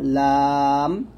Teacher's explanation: লাম জিহ্বার আগার কিনারা উপরের মারির দাঁতের গোড়ার সঙ্গে লাগবে, পাতলা হবে